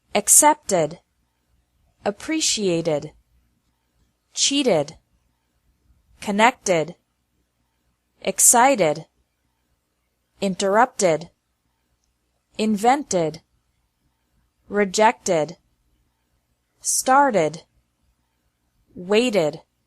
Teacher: The second pronunciation of ed is like ed with an extra syllable, after verbs ending with a T or D sound.